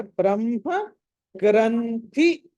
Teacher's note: ముందర మ పలకాలి, తర్వాత హ